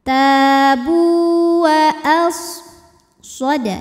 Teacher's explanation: Nah, tapi punya ciri khas juga yang dinamakan dengan sifat sofir. Sofir itu artinya ada suara desisan seperti suara angsa untuk huruf sod ya.